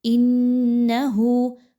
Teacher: انہو، حمزہ اور نون کو آپس میں ملاتے ہوئے نون مشدد کا غنہ کیجیے، آواز کو ناک پر لے کے جائیے ایک الف کے برابر.